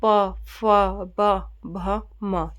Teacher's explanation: पै वर्ग ये बोला जाता है ओष्ठ या फिर होठ से · यानी क्या है होठ हमारे क्या है टच कर रहे हैं एक दूसरे को